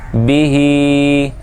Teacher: ہا جو ہے اس کے نیچے کھڑی حرکت ہے تو اس لیے اس کو ایک الف کے برابر کھینچ کر پڑھیں گے ، کیونکہ کھڑی حرکات حروف مدہ کے قائم مقام ہیں۔ بی